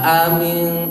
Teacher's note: Baik, perhatikan kata aamintum dibaca dua-duanya hamzahnya jelas. A atau hamzah sifatnya syiddah. Syiddah itu tegas, jelas. Jadi tidak boleh amintum dia tidak tegas.